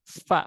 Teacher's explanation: Fa itu bukan pakai dua bibir tapi ujung gigi seri atas nempel ke perut bibir bagian bawah